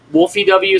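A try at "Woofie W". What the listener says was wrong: Not Wolfie. There's no L.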